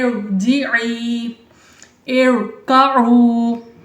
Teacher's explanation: تو اب یہ دیکھیں را، اب ہم نے کیا پڑھا تھا کہ را ساکن سے پہلے عارضی زیر ہو تو را کو پر پڑھیں گے. یہاں پہ یہ را ساکن سے پہلے عارضی زیر ہے تو اس میں ہم نے را کو پر پڑھنا ہے